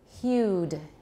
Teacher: u is not a phoneme we counted as two sounds it's a special diphthong it's a rising diphthong